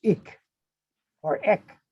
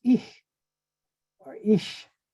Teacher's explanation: they eliminated the k and replaced it with a ch consonant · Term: consonant shift